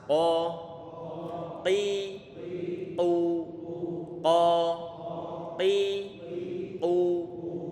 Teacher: Huruf qaf makhrajnya di ujung, di pangkal lidah ditempelkan ke atas.